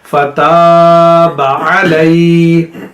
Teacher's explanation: فتاب علی، با کو لمبا نہیں کرنا